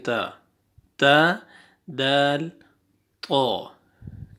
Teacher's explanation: ठीक है, दा दा ता दाल और तो एक ही जगह से इनका मखरज है। ये ज़बान देखें अगले सामने वाले दो दांत हैं उनकी जड़ से लग रहे हैं, ता और दाल, और ये तो देखें वहीं लग रहा है तो।